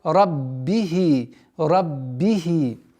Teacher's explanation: при неполноценном произношении звука б появляется звук п. Раббихи. И нужно усилить давление на губы.